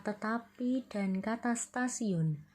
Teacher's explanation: Perubahan letup apicodental T menjadi letup laminoalveolar karena pengaruh secara progresif dari bunyi geseran lamino alveolar S. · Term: asimilasi progresif